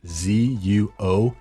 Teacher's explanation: so that's zuo third tone meaning left